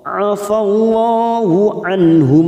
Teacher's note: nun sukun bertemu ha idhar halqi kita baca jelas